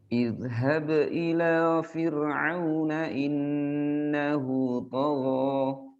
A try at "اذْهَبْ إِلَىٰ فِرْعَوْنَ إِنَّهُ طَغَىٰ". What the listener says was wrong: Ra, tipiskan.